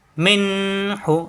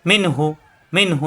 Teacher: এখানে মিনু এভাবে পড়া যাবে না এখানে কোন গুণ হবে না মিনহু স্পষ্ট হবে গুণ গন্ধ আসবে না